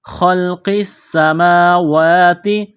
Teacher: خا کو موٹا کرنا ہے